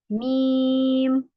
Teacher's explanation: इतना याद रखना तो दोनों होठों से अदा होते हैं और इसमें जो एयर फ्लो होता है वह हमारा नोज से भी निकलता है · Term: उन्ना की सिफात, गुन्ना